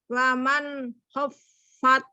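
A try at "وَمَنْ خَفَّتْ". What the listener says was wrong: Ini baca nunnya putus nih, jangan diputus, sambung. Terus fa-nya juga nyambung. Jadi waman khaffat. Jadi kalau fa itu nggak boleh berhenti ya mulai sekarang ya. Keluar terus ya.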